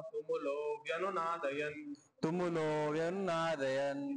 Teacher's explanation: आता तुमुलो मध्ये ओकार आलाय, तो ओकारचा पहिला दीर्घ उच्चारण आहे